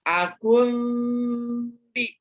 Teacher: Bertemu dengan huruf ba dan jangan lupa bunyi mimnya ditahan dulu 3 harkat. Ya. Akun bi ditahan 3 harkat. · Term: Iklab